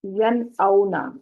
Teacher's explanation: ین اونا میں دیکھیں نون ساکن کے بعد فوراً بعد حمزہ آ رہا ہے، تو یہاں پر نون کی آواز واضح ہوگی، ظاہر ہوگی، اس کو ین اونا نہیں کریں گے۔ · ناک میں آواز نہیں جائے گی، کلیئر اظہار کیا جائے گا، نون ساکن یا تنوین کو ظاہر کر کے پڑھا جائے گا۔